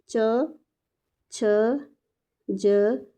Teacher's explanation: पहले स्पर्श करती है हमारी जो टंग होती है, उसके बाद इसमें संघर्ष होता है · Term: स्पर्श संघर्षी व्यंजन